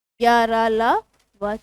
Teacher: आपके स्वर तंत्र के किसी ना किसी भाग को स्पर्श करते हुए वायु तो निकलेगी, लेकिन पूर्ण स्पर्श नहीं करती। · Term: अंतस्थ व्यंजन